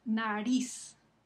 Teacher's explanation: Ven que el énfasis cae encima de ris, la última sílaba. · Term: palabras agudas